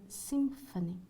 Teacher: M, labiodental before f